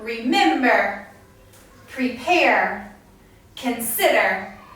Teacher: the stress is put on the second syllable